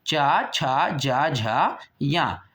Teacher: इनको जब हमने बोला तो हमारी जीभ या हमारे मुख से हमारे गले से निकली हुई जो वायु है वो तालु को छू करके निकली, ठीक है। तो इसको चा वर्ग को तालु वर्ग भी कहा जाता है।